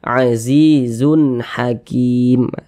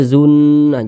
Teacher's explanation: tanda baca tanwin berjumpa dengan huruf ha hukumnya izhar halqi maka dibaca jelas tidak berdengung baca pendek saja